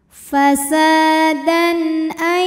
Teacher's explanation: kita panjangkan dua harakat fasadan dan ada hukum izhar halqi sebab ada tanwin fathah yang menghadapi huruf halqi atau huruf tenggorokan yaitu Hamzah maka tanwin kita bunyikan dengan izhar jelas